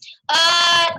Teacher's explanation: Huruf dha ini keluar dari sisi lidah bertemu geraham atas. Sisi lidah bertemu geraham atas, panjangnya boleh geraham kiri, boleh juga geraham kanan, boleh juga dua-duanya.